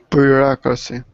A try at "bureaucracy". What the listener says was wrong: No, try again. Listen to the U. There's a little there's a little ya at the beginning. Bureaucracy. There's a little ya before the U. Bjork. Think of Bjork.